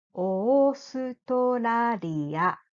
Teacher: In English, there is L sound and R sound, but there are no such sounds in Japanese. And Japanese la, li, lu, le, lo sounds much closer to L sound, not R sound